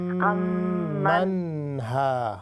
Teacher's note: نون پہ غنہ، اس کو باؤنس بالکل نہیں کریں گے ہم